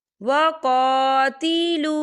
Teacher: यहाँ पर अलिफ मद्दा हो रहा है, तो हम इसे दो हरकत के बराबर खींच के पढ़ेंगे